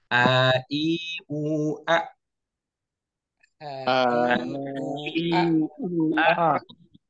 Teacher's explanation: Ini huruf hamzah dari pangkal tenggorokan.